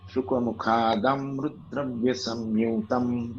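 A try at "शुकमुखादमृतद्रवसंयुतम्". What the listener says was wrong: Not dravya. When you say, when you will say dravya, the meter will lose the melody. Okay, I will break it for you. Shukmukhad amrद्रवसंयुतम्. शुकमुखादम्रद्रवसंयुतम्.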